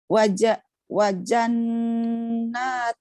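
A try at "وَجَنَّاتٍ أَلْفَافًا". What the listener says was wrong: Wajanatin, tidak ada alif lam. Alif lamnya itu enggak enggak dimatikan.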